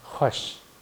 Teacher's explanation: Такое очень слитное произношение звука х и в. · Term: дифтонг